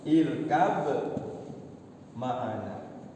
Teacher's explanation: Dekat dengan ya huruf dua-duanya dekat berdekatan. Ba ketemu mim ya sama. Malahan satu letak ya. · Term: Idgham mutaqarribain